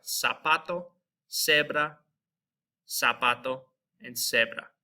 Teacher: just our Z, which is zeta in Spanish. It's going to be pronounced like an S.